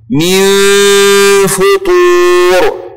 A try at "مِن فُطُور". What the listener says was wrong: ابعد لسانك عن مخرج حرف النون.